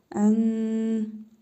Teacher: İhfa qaydasına görə nun hərfini burnumuzda tələffüz edərək bir əlif miqdarı uzadırıq.